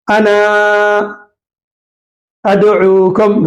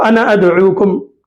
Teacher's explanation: انا پر وقف کرے تو الف پڑھا جائے گا اور ایک الف کی مقدار کھینچ کر پڑھیں گے